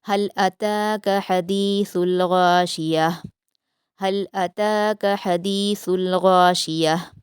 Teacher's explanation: سا کو نرمی سے ادا کریں گے، غین کو پر پڑھیں گے اور آخر میں گول تا کو وقف کرتے ہوئے ہا ساکن میں بدلیں گے اور اس کی آواز کو اچھے سے واضح کریں گے۔